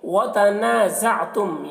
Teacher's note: यहाँ पर नून में अलिफ मद्दा है, 1 अलिफ के बराबर खींच कर पढ़ेंगे।